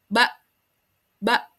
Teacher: Sidah itu kan ee tertahannya suara ya, tidak mengalir suaranya. Ba ba nah tertahan suaranya tertahan gitu. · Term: syiddah